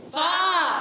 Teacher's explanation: فا کا مخرج ہے اوپر والے دانتوں کے کنارے. جب نیچے والے ہونٹ کے تر حصے سے لگتے ہیں تو ادا ہوتا ہے